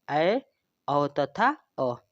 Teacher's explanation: अर्धविवृत स्वर के उच्चारण के दौरान जो मुख है वो विवृत स्वरों के उच्चारण से थोड़ा कम खुलता है